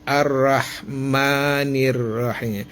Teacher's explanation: Madinya dipanjangkan tapi hanya dua ketukannya.